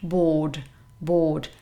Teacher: the stress is on the first syllable, and this is a long O sound